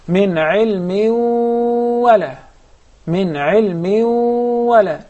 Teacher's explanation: So we must pronounce the غنة, and we'll measure it with two harakas. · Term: idgham with غنة